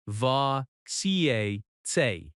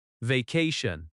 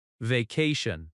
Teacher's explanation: Vacation has stress on the second syllable. Va ca tion.